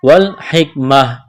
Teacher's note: ویعلمہم الکتاب، کڑا زبر ہے، الف کے برابر کھینچنا ہے، والحکمۃ، وقف کریں گے تو گول تا کو ہا سے تبدیل کرنا ہے